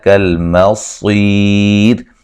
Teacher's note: کالمصیر، صاد کو موٹا ادا کریں گے، یا مدہ ہے اور وقفاً را کو باریک کر کے پڑھیں گے، ملانے کی صورت میں را موٹی ہوگی